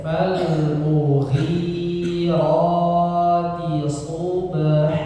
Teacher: Perhatikan awalnya ya, fal mughi yang panjang ghi-nya ya. Fal mu pendek, fal mughirati subha.